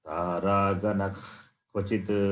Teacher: If Visarga faces Kakara as the next letter, immediate next letter, then Visarga takes this sound, the sound which comes from the root of the Jikhva, the tongue.